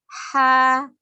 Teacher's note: Kalau H kecil dari tenggorokan bagian tengah. · H juga mempunyai sifat hames, yaitu mengalirnya nafas. Lebih terlihat ketika kita mengucapkan huruf H sukun.